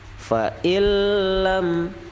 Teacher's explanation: nun mati bertemu lam, itu disebut idgham bila gunnah, tanpa dengung. Fa'illam, jangan ada dengung.